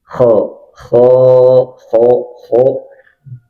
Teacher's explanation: Jadi mulut tidak dibulatkan